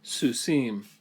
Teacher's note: So we have a word like horse, sus, and if we made it plural, it would be susim. So even though the accent moves to the end of the word and pulls it off the vowel stays long in this case